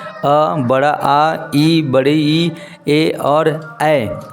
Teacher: इनके उच्चारण में हमारा जो मुंह है वो पूरा गोला नहीं होता है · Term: अव्रत मुखी